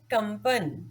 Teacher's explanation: शब्द है कंपन, कंपन में प से पहले अनुस्वार आया है और प वर्ग का पंचम अक्षर है म, इसलिए इस अनुस्वार की ध्वनि म आधा म होगी